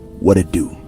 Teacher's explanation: you see the t is flapped around to a d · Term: flap T sound